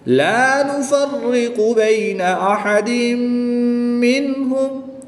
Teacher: یہاں پر نون ساکن کو خوب ظاہر کر کے پڑھیں گے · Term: اظہار